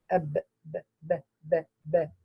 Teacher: Between the two lips is the makhraj of ba, mim, and waw. Here for the ba, which has qalqala, ab, b, b, b, b, b.